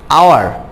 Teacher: অনেস্ট, এখানে অনেস্টে এইসের উচ্চারণটা আসে নাই, তাই এটা হয়েছে অ্যান। আওয়ার, আওয়ারে এইচের উচ্চারণ আসে নাই, ওর উচ্চারণ এসেছে। এই ধরনের আনসাউন্ড এইচ, যে সকল এইচের উচ্চারণ আসবে না ওয়ার্ডে, সেই সকল শব্দের ক্ষেত্রে আমরা তার পূর্বে এ না বসিয়ে অ্যান বসাই।